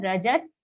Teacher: Rajas, half sa in the visarga because the next letter is also starting with sa.